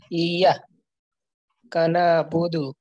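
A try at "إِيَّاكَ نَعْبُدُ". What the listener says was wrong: এই যে ইয়ার টানটা কম হয়ে গেল না, ইয়াকা না'বুদু, প্রয়োজনে আপনি বলবেন ইয়াকা না'বুদু, এভাবে শব্দ শব্দ করে বলেন।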